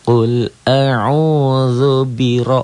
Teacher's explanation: Ro-nya tebal tafkhim karena baris di atas.